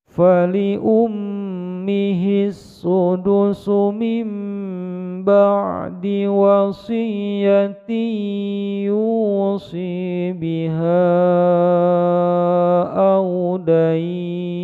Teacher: Bacaan idgham biguna wasiyatin menjadi wasiyati, ditekan panjang 2 ketukan. Ini mad jaiz munfasil 5 ketukan, ujungnya mad arid disukun.